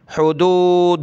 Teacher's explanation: दाल पर पेश है तो लफ्ज़ अल्लाह को मोटा करेंगे